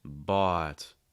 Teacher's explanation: you're opening your mouth wide you're raising the back of your tongue you're lowering the front of your tongue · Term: aw sound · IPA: /ɔ /